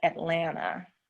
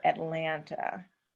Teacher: In the southern part of the United States, our syllables, especially with our vowels, are already very long. · A slower pace or lengthening of the last syllable